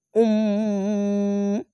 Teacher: এখানে ইকলাব গুন্নাটি এরকম হবে আইন দো পেশ উন্ন বলে উম্ম এ মিম কে ধরে উচ্চারণ করে গুনগুন করে আওয়াজ হবে